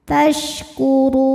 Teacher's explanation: tafasyi ya tafasyi itu artinya menyebarkan angin di dalam mulut tasurun huruf ro dibunyikan secara tafkhim karena ro berharakat dah maka ro dibunyikan dengan tebal